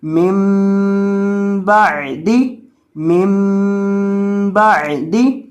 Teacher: چھوٹی میم کے اوپر گنہ کر کے پڑھیں گے